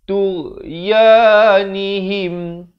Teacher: makhrajnya di hujung kerongkong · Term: ghain